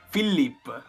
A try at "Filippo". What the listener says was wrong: Filippo. Non allungare le L. Filippo. Come Filippo, senza la O. Filippo.